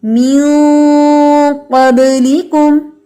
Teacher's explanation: می سے آواز باریک اور آگے آواز ہیوی